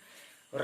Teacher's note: रा बोलते समय लुढ़कता है जीभ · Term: लुंठित